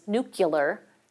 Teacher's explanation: he was epenthesizing a y sound between k and o.